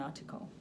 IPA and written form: ˈɑːtɪkəl (article)